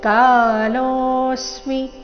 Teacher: ಕಾಲೋ ಎರಡು ದೀರ್ಘ, ಲೋ ಮೇಲೆ ಆಘಾತ